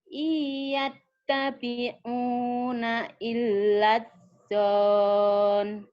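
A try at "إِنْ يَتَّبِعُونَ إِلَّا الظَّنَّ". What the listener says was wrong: Dzonnya pendek, langsung nyambar.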